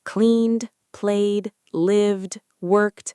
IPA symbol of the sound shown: d